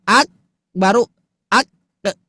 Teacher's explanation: yang menjadi asbab qof itu memantul adalah buka tutupnya pangkal lidah kita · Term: qalqalah